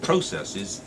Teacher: the stress is on the first syllable processes and you got two quiet syllables after that